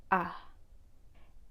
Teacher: you can make the schwa sound by having your tongue in a mid-central position of your mouth very relaxed and say ah it's a very relaxed and neutral sound and